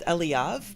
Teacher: He puts the emphasis on the first syllable